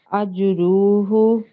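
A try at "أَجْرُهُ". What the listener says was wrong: Okay, still not fine, but you can practice. So ajruhu. So the ha here is carrying an inverse dhamma. So you have to prolong that for 2 seconds, but not the raw. Okay, so ajruhu.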